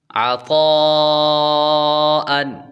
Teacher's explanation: عین کی آواز نکالیں گے، طا حروف مستعلیہ میں سے ہے، پر کریں گے یعنی موٹا پڑھیں گے